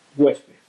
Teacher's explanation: La palabra huésped es una palabra llana, lleva la sílaba tónica en hues, acaba en D, por lo tanto, como es una consonante que no es ni N ni S, se acentuaría. · Huésped es una palabra bisílaba formada por hues y por pez, dos sílabas. Han juntado en la primera sílaba en hues, se ha juntado el sonido vocálico u con la vocal e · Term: diptongo